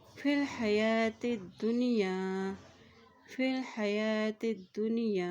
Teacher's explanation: دال کی پیش کو نون کے ساتھ ملاتے ہوئے پڑھیں گے کیونکہ نون کے اوپر جزم ہے